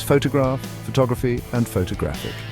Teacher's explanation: Consider the words photograph, photography, and photographic. The stress shifts from the first syllable in photograph to the second syllable in photography and finally to the third syllable in photographic.